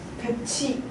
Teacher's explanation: 구개음화라고 해서 티읕이 치읓으로 바뀌는 조건이었죠